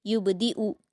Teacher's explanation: यहां पर आप देखिए बा पर कलकला करेंगे